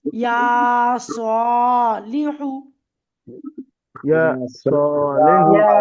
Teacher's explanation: তাহলে প্রথম দুইটি অক্ষর টান দিয়ে পড়তে হবে এক আলিফ পরিমাণ করে, আর শেষের দুইটি অক্ষর তাড়াতাড়ি পড়তে হবে। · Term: খাড়া জবর